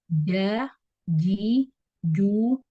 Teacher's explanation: Nah, tepatnya dengan apa yang ada di atasnya, langit-langit mulut di atasnya, bagian tengah langit-langit mulut di atasnya. Sifat-sifatnya adalah jahr, syiddah, istifal, infitah, dan qalqalah. · Makhraj dari jim adalah bagian tengah lidah yang bertemu dengan bagian tengah langit-langit di atasnya. Nah, tepatnya dengan apa yang ada di atasnya, langit-langit mulut di atasnya, bagian tengah langit-langit mulut di atasnya. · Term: huruf jim